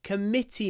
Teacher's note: committee the stress on the second syllable